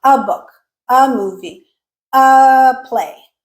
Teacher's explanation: typically when you have the the article a, it becomes the schwa sound.